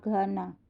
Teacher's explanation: Misalnya bunyi GH yang terdengar ketika mengucapkan kata gana. Bunyi ini terjadi karena akar lidah bertemu dengan dinding kerongkongan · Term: radikofaringal